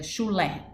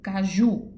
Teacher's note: Oxítona, última sílaba mais forte. Paroxítona, o exemplo de oxítona, chulé, acento no lé, por exemplo.